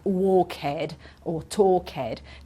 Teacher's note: they basically add an extra syllable and it sounds like ed at the end